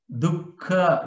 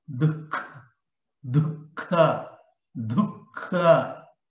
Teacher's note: In between du and ka, there is a visarga is there. So we should not pronounce like a dukha. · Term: jihvamulya